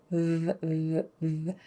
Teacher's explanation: V is made with the teeth just kind of touching that bottom lip. V, v, v. It's the louder or voiced version of F.